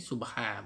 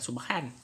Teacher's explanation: Bunyi subha, bukan subhan. Memang asalnya subhan. Tapi bila nak waqaf, nak berhenti, kita baca subha.